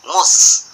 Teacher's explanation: Jadi jadi bibir itu tidak akan monyong selama itu tidak, hurufnya itu tidak dhammah atau menyebut huruf waw, gitu, tidak akan monyong lah. Jadi musnya itu kita monyongkan dulu bibirnya, mu karena itu dhammah